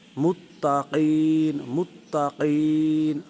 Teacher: قاف کو پر اور اس پر کلکلا بھی ہوگا